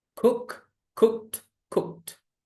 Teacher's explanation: wrong cook cooked cooked because the verb ends with voiceless sound when you add Ed in the past tense and past participle the Ed becomes T not D